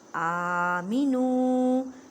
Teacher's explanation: نو کو ایک الف کی مقدار میں کھینچ کر پڑھیں کیونکہ واو مدہ کا قاعدہ ہو رہا ہے